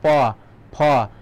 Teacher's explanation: ওষ্ঠ মানে ঠোঁট, অর্থাৎ দুই ঠোঁটের সাহায্যে, যেমন প ফ, তাহলে দুই ঠোঁটের সাহায্যে কিন্তু উচ্চারিত হচ্ছে